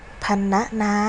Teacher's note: มาแล้วเสียงพยัญชนะท้ายของสะามก็คือพยัญชนะออกมานั่นเองค่ะดังนั้นเวลาเขียนคำอ่านทหารเด็กๆเจอพยัญชนะมอมาร์สตามหลังรอหันสามารถเขียนคำนั้นโดยประสมสระอำได้เลยค่ะอ่ะมาทำที่2พรรณนาอ่านว่าพรรณนาคำว่าพันธุ์มีพยัญชนะนอนเอนซึ่งอยู่ในตัวสะกดมาตรากนตามหลังรหันอยู่ดังนั้น เราจึงอ่านออกเสียงพันเป็นเสียงสระอะและตามด้วยเสียงตัวสะกดมาตรากน